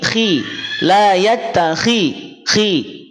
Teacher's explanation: Jawabannya jelas, karena dia kan tebal, istilah rahangnya terangkat. Pangkal lidahnya terangkat. Tapi karena dia kasroh, maka ketebalan yang setadinya sempurna dia berkurang karena ada kasroh ini. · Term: tafkhim nisbi